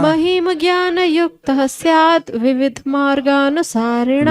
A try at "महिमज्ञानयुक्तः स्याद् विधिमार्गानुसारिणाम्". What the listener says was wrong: विविध नहीं, विधि है भाई। महिम ज्ञान युक्त स्याद् विधि मार्गानुसारिणा।